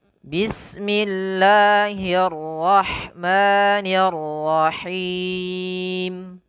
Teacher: rollnya agak ditebalkan sedikit ya karena sifatnya adalah sifat huruf yang dia tafkhim